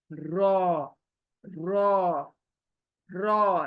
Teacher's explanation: लेकिन अरबिक में इसको पुर पढ़ना चाहिए, पुर यानी मोटा करके, रॉ, रॉ, रॉ, रे नहीं, रॉ, यानी मोटा रखना है रॉ को, बारीक नहीं करना है।